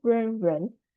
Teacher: Ren will be r plus n, second tone.